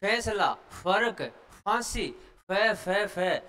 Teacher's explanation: तो ये फ जो होता है वो दंतु होता है